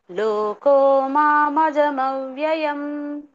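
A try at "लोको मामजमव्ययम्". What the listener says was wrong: లోకో మా అటు కలిపేశారు. లోకోకి కొంచెం ఒక లోకో తర్వాత కొంచెం స్పేస్ గ్యాప్.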